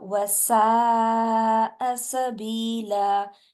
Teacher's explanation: موٹا نہیں ہونے دینا سین کو، اور سین میں سیٹی ہوتی ہے